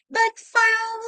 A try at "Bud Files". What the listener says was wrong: Don't say bat.